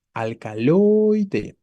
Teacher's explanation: escuchen al momento de la pronunciación. ¿Hacia dónde se va la fuerza? Hacia la O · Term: sílaba tónica